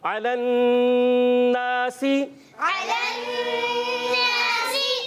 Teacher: نون مشدد, ایک الف کا غنہ ادا کریں گے, حرف مدہ ایک الف کھینچ کر ادا کریں گے.